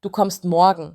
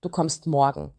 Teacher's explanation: Mit fallender Intonation ist das eine Aussage, aber mit steigender Intonation ist es eine Frage.